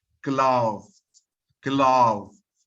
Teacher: there is a slight movement between th and za.